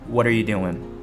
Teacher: you want to reduce this R sound and make it a little shorter and quicker Are 在口语里经常会缩短成弱化的发音re 就像你应该知道I am 会变成I'm，He is 一般会说He's .So are becomes re.